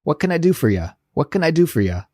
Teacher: we really smush our words together and ask this question really quickly when we say it in a natural way